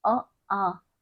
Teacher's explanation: यानी कि जब इन स्वरों का हम उच्चारण करते हैं, हम अपने कंठ पर हाथ रखकर इनका जब उच्चारण करेंगे अ आ, तो हमारे कंठ के अंदर एक ध्वनि कंपन होती है, यानी कि ये स्वर हमारे कंठ से बोले जा रहे हैं।